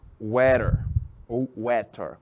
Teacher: Pronúncia do T tanto pode ser som de T, como pode ser som de R.